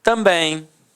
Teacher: Repare que a sílaba tônica é a última e é terminada em em.